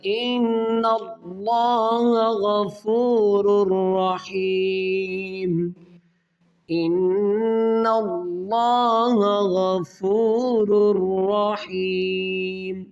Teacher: ان اللہ، نون مشدد ہے، یہاں پر غنہ کریں گے اور اللہ کے لام یعنی کہ لفظ اللہ کے لام سے پہلے زبر ہے تو اس اللہ کے لام کو موٹا کریں گے. ان، یا غنہ کر کے پھر اس کے بعد اللہ کا لام موٹا کریں.